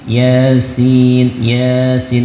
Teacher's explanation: Ya-nya 2 harokat, sinnya panjang, dia sampai 5 6